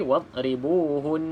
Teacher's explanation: huruf dad bukan huruf qalqalah, maka tidak boleh dilantunkan